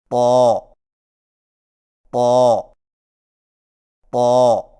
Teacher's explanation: طا کی ادائیگی میں زبان کی نوک کو ثنایا علیہ کی جڑ سے لگا کر اور زبان کے پچھلے حصے کو تالو کی طرف بلند کرتے ہوئے موٹی آواز میں پڑھیں